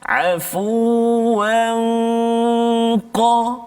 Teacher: Jadi dengung dia tu dibunyi seolah tebal sikit bunyi dia sebab huruf qaf isti'la kan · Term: ikhfa hakiki